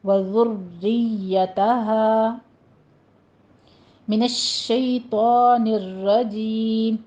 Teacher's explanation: شین کے اوپر تفشی پیدا ہوگی